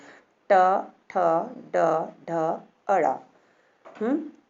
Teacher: हमारी जीभ यहाँ पे मुंह के अंदर जो ऊपर गहरा भाग है वहाँ पर स्पर्श करती है ना, इसको कहते हैं मूर्धा